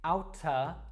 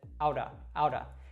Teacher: out of now this is how most Americans will pronounce this that t sound in the middle actually warps to kind of a D sound now this is very similar to the r sound in Latin · it's just a very quick flick of the tongue at the top of the mouth